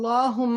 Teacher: اور لام موٹا ہوگا، وائی بیکاز اٹس ورڈ اللہ ہے